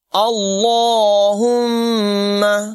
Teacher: لفظ اللہ کو پر ادا کریں گے، اللہ اور میم مشدد میں غنہ ہوگا